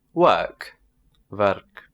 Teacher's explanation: So the W turns into a V sound.